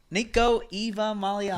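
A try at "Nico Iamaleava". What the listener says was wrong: there's no Eva in it, son.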